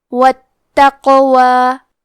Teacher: حرف القاف کے ادائیگی زبان کے جڑ اور تالوں کے نرم حصے سے ہے. قاف حروف التفخیم میں سے ہے تو ہم یہ حرف کو موٹی آواز میں پڑھیں گے کیونکہ یہاں قاف ساکن ہے تو یہاں قاف کا حکم ہے قلقلہ لہذا ہم یہ حرف کو ہلاتے ہوئے یہ کلمہ کو پڑھیں گے واتقوا.